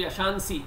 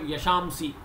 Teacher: In Sringeri sampradaya, this anuswara is pronounced as makara.